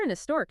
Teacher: with historic you don't really say the H strongly